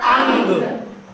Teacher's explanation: आ के बाद गा का उच्चारण हल्का सा गले में आ रहा है, यानी इसके उच्चारण के लिए एक दूसरे वर्ण गा की सहायता लेनी पड़ रही है, इसलिए ये स्वर के योग्य, इसीलिए ये क्या है? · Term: अयोग वाह